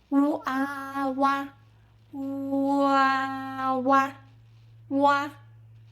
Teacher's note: This is u combined with a. Start with u, lip rounded, then open wide into a.